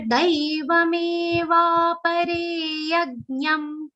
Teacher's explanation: Daiva, it's starting with a long sound, and we'll have to say it a slightly longer.